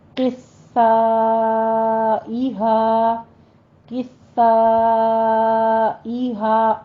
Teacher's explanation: تشدید پہ سختی کرنی ہے لیکن سا کی صفت جو ہے اس میں سیٹی نہیں لانی ہے · آگے الف مدہ کے بعد حمزہ آ رہا ہے ایک ہی کلمہ میں، تو مد متصل واجب کریں گے، 5 کاؤنٹ کرنا ہے